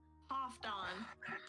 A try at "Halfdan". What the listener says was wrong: You pronounce the L, but we'll get to. We're gonna have a vocal lesson one day.